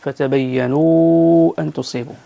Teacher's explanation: قبل المد فتبينوا أن تصيبوا، المد المنفصل 6 حركات